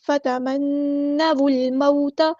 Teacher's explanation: فتمن، ایسے الف کے بعد رکتے ہیں، فتمنوا الموت، واو کو ہم نے لام کے ساتھ ملا دینا ہے، حمزۃ الوصل ہمارا ڈراپ ہو جائے گا۔